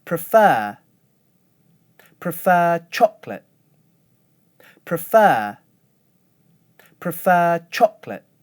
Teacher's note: I hold one stable pitch for the word prefer and go up for the first syllable of chocolate. Again, I go down at the end of the phrase.